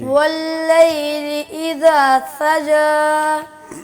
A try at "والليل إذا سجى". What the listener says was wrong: جی سین کا سین کی آواز درست کیجئے بیٹا. دونوں دانتوں کو ایک دوسرے کے اوپر رکھیں. ذرا زور سے جب آپ نکالیں گے اسی طرح دانتوں کو رکھ کے تو سین کی آواز نکلے گی. زبان کو تھوڑا پیچھے رکھیے گا دانتوں سے.